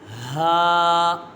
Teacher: اس کا مخرج ہے حلق کے نیچے والے حصے سے ادا ہوتا ہے۔ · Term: حرف حلقیہ